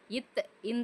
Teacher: காரணம் இத்து இந்து இவ்விரண்டெழுத்தும் நாவின் நுனி மேல்வாய் பல்லின் அடிப்பகுதியை தொடுவதால் பிறக்கின்றனர். இத்து இந்து சொல்லி பாருங்க. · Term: இனவெழுத்துக்கள்